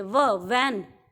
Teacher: जब आप वी वाली साउंड बोलेंगे, आप बोलकर देखो व, तो आपके जो अपर टीथ हैं, आपके जो ऊपर वाले दांत हैं, वो आपके लोअर लिप के इनर साइड में टच करेंगे. आपके ऊपर वाले दांत नीचे वाले लिप के इनर साइड में, इनर पार्ट को टच करेंगे